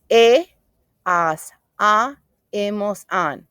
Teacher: Because the H is not pronounced in Spanish. We don't go in ha, ha. Nope. We start in the vowel.